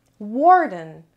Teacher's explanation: Warden. Warden has 2 syllables and the stress is on the first syllable. Warden means keeper.